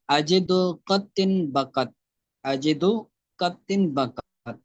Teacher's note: ادائیگی کا طریقہ بھی بیان کر رہے ہیں کہ طریقہ ادائیگی، حروف شدیدہ کو ادا کرتے وقت آواز ان کے مخرج میں اتنی قوت سے ٹھہرتی ہے کہ فوراً بند ہو جاتی ہیں اور سخت ہو جاتی ہیں۔ یعنی یہ حروف جب پڑھیں گے ہم تو آواز قوت سے ٹھہر کر پھر آواز بند ہو جاتی ہے